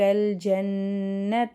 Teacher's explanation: ஜன்னத்தில் நூன் ஷத்தா குன்னா செஞ்சு ஓதணும்.